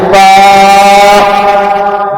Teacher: سامنے کے 2 بڑے دانتوں کا کنارہ جب نیچے والے ہونٹوں کے تر حصے کو لگے گا تو فا ادا ہوگا